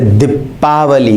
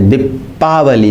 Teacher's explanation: प पर बलाघात है, दीपावली, मुंह बंद हो रहा है और हवा अधिक निकल रही है